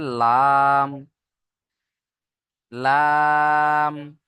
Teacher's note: জিভের কিনারা এবং সামনের উপরের দাঁতের এবং পাশের উপরের দাঁতের মাড়ির সাথে লাগিয়ে উচ্চারণটা হবে